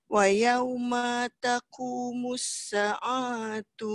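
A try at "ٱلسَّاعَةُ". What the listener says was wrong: Sa panjang sikit. panjang sikit.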